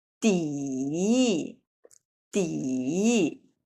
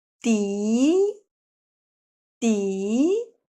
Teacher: So for this one, There are two third tone characters arranged together, so the first one will change from the third tone to the second tone.